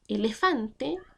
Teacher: una palabra grave que se acentúa en fan, pero termina en E.